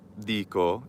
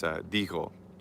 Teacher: an intervocalic K becomes a G